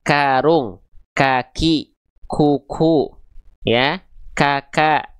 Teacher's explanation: Cuman kaf nanti dia harus keluar percikan nafas.